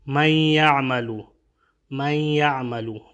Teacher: یہ نون ساکنہ کے بعد یا آیا ہے تو یہاں پہ ادغام ہوگا اور ساتھ ساتھ یہاں پہ غنہ بھی ہوگا